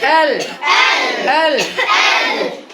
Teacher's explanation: জিহ্বার আগা সকলে উপরের তালের সাথে লাগান